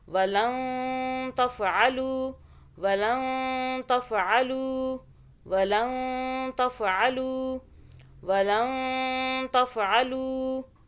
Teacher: آگے تا اخفاء کا حرف ہے، اس لیے ہم پچھلے نون پر اخفاء کریں گے، یعنی کہ نون کو چھپا کے پڑھیں گے، زبان کو تالو سے ٹچ نہیں کرنا